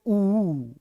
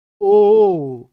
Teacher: जिनको बोलने पर होठ वृत्त बना दे, वृत्त गोल गोल हो जाए, गोल गोल, उनको कहते हैं वृत्तमुखी स्वर।